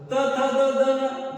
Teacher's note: तुम्हाला सांगता आल पाहिजे दंते कोणता आहे त थ द न जिथ जीभ दाताला थडकती त्याला आपण दंत म्हणलय